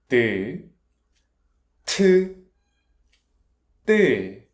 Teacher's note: Consonant is t higher sound not aspirated.